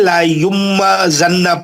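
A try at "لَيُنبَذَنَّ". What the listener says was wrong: دیکھیے نون کو میم سے بدل کے غنہ کرنا ہے، تو کیسا کریں گے؟ لا یم بزنہ. غائب ہو گیا، میم آ گیا نا، میم آ گیا، غنہ بھی آ گیا. اب ہاں میم کا غنہ کر کے با پڑھنا. لا یم نون کو بدلنا ہے، بات تو اپنی جگہ رہیں گا نا.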